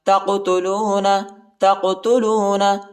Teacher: تا کو قاف کے ساتھ ملائیں گے اور قاف کو جھٹکے کے ساتھ پڑھیں گے